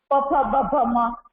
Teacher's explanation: तो ये ओष्ठ, दोनों ओष्ठ जो हमारे है वो एक दूसरे को टच करते बोलते समय, इसलिए उसको ओष्ठस्य कहा जाता है।